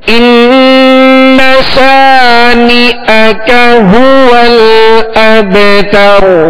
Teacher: شا، اس کو ہم نے کھینچا، آگے نی کا ہو، تو اس کو ہم نہیں کھینچیں گے